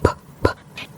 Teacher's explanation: you can't hear your throat vibrate when you say that P sound PP the sound comes directly from your mouth and therefore it is voiceless or unvoiced